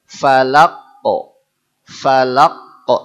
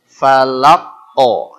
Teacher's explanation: Yang qaf ada kesan o, kesan tafkhim atau tebal.